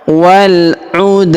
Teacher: Huruf da berharakat sukun kita pantulkan atau kita qalqalahkan. Waludw huruf wa kita panjangkan du emp atau en harakat karena di depan huruf wa terdapat alif sebelum huruf pemberhentian dan huruf pemberhentian huruf ini kita sukunkan atau kita matikan.